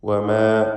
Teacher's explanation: വമാ എന്ന് മീമിൻ്റെ അലിഫിനെ തർക്കീഖ് ചെയ്യണം.